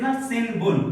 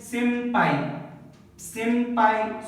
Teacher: So before the P and B, if N comes, just remember the ma sound. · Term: nasal sound